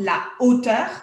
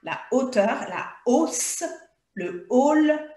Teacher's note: avec les h aspiré où on ne fait pas la liaison